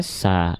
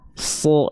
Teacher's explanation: kalau dia termasuk ke dalam huruf yang tebal, maka bunyi vokal yang akan keluar itu bukan vokal A, tapi dia akan condong pada vokal O